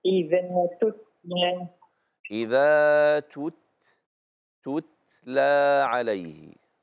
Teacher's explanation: مخرج التاء من طرف اللسان